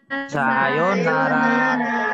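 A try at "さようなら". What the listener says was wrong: Bukan sayur. Sayur itu yang dimakan. Sayo. Bukan sayur. Sayonara.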